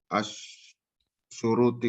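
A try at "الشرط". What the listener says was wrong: Syarti, syurut ada wawunya.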